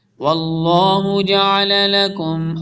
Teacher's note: اللہ کے نام کو فل ٹائم پڑھنا ہے فل ٹائم پڑھنا ہے بولڈ پڑھنا ہے موٹا پڑھنا ہے